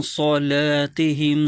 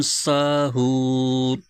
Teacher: یہاں بھی صلاتہم میں صاد ہے، پر کرنا ہے، موٹا کر کے پڑھنا ہے، اور ساہون میں سین ہے، اس کو باریک آواز کے ساتھ پڑھیں گے. تو صاد کو ہمیشہ موٹی آواز کے ساتھ پڑھنا ہے اور سین کو ہمیشہ باریک آواز کے ساتھ پڑھنا ہے. تو اس طرح سین اور صاد میں فرق ہو جائے گا.